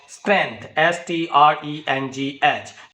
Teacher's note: in this word there are two consonant clusters, one in the beginning, sa and ta, st, and one at the end, ngth